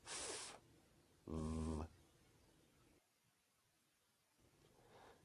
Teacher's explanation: labiod Dental sounds are produced with the upper teeth and the lower lip